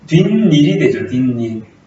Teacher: 뒷말의 첫 소리 모음 앞에 니은 소리가 난다 · 그러면 여기에도 니은이 첨가되고 여기도 니은이 첨가돼서 니은 하나가 아니라 니은 두 개가 첨가된 경우입니다